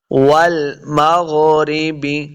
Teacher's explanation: واو زبر لام واو کو جب پڑھیں گے تو اپنے دونوں ہونٹ گول ہوں گے، تب واو کا مخرج سیدہ ہوتا ہے۔ غین ساکن ہے، غین حروف مستعلیہ سے ہے، اس کو ہم نے موٹا پڑھنا ہے